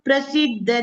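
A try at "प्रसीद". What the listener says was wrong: ಪ್ರಸಿದ್ಧ ಅಲ್ಲಿ ಒತ್ತಾಕ್ಷರ ಇಲ್ಲ, ಪ್ರಸಿದ್ಧ ಅಂತ ಹೇಳಿದ್ರೆ ಸಾಕು.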